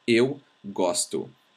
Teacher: Please notice that we write an O, but we actually say U. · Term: U sound